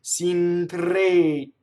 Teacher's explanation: Notice the stressed E and it's closed, right?